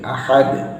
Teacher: dal di sini harus ada qalqalahnya, tidak pula terlalu tebal.